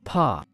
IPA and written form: pɔː (paw)